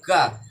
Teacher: जैसे ही आप का बोलते हैं आपके मुंह से एक तो बहुत ही अल्प मात्रा में वायु बाहर निकल रही है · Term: अल्प प्राण